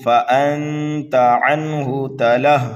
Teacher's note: نون ساکن کے بعد میں تا حروف اکفا میں سے آ رہا ہے تو یہاں پر بھی ہمیں اکفا کرنا ہے